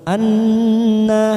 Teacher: nun yang bertasdid bacaan gunnah, kita tekan 3 ketuk, siap masuk ke huruf nun. Anna, nanya 2 harakat karena fathah berdiri.